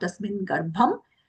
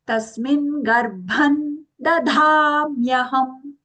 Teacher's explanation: we are using the half na for the anuswara